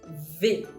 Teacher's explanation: se muerde un poquito el labio inferior una pequeña vibración